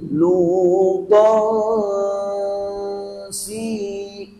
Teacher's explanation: Kita sembunyikan tanwin ta ke dalam sin, maka sin ialah makhrajnya ialah hujung lidah yang mudah ialah angkat ke gigi atas contoh begini, lutan si ta, dia tidak dengung lutan si, 2 harakat dua harakat masih begitu. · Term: ikhfa